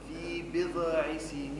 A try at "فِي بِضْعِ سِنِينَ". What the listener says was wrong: ما تقلقليش حرف الضاد. في بضع بض سكن مش بضع بضع. لا في بضع سنين.